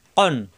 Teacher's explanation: জিব্বার গোড়া থেকে উচ্চারণ